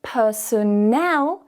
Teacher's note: because we put the stress at the end now, we need to change that schwa sound so it's now a stronger syllable